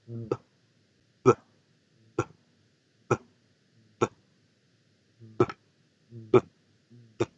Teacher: Cada vez que ustedes hagan la explosión aquí en los labios para que el aire salga, debe vibrar la garganta y ahí es donde se produce el sonido de la B. · Vamos a cerrar los labios pero esta vez para hacer que el aire salga, debo generar vibración acá en la garganta. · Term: B bilabial